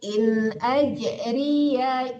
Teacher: rinya tidak panjang karena yanya berharakat